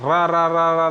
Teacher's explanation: लुंठित या प्रकंपित व्यंजन जो केवल रा होता है, कंपन करना, रा रा रा रा रा बोलो तो जीभ से कंपन सर से आवाज़ आती है।